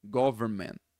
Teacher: geralmente você vai ouvir government, sem o N, e sem o T também